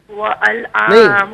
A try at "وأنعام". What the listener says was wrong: واو نہیں ہے، انعام. انعام ال نہیں ان نون انعام